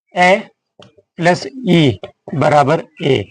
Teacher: अ हमारा कंठ से उच्चारित हो रहा है। इ हमारा तालु से। तो दोनों से मिलकर के बनता है ए। तो ए का उच्चारण स्थान कंठ तालु।